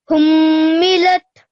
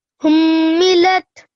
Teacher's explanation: he's joined the 2 letters here, the sakin ta and the lam, lat, and he's made sure that he's pronounced both sounds.